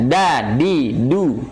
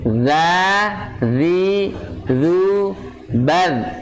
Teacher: Nah, makanya sifatnya syiddah, keluarnya suaranya lebih kuat dibandingkan huruf za yang mempunyai sifatnya rokhwah, yaitu lunak